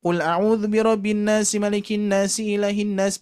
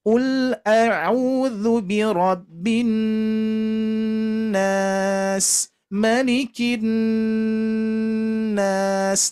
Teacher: di sini ada nun bertasydid yang hukumnya itu adalah gunnah musyaddadah yang harus kita dengungkan